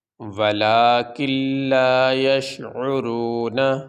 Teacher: تو لام کے اوپر تشدید ہے اور تشدید والے حرف کو پہلے حرف کے ساتھ ملا کے سختی سے ادا کیا جاتا ہے، تو یہاں پہ نون پڑھا نہیں جائے گا، لام یہ پڑھا جائے گا۔ تو اس لام کو اس کاف کے ساتھ ہم ملا کے پڑھیں گے، کاف لام زیر کل، لام الف زبر لا، ولاکن لا، یا شین زبر یش، عین پیش عو، را واو پیش رو، نون زبر نہ، ولاکن لا یشعرون۔